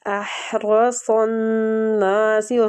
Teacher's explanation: را فتح کی وجہ سے پور پڑا جائے گا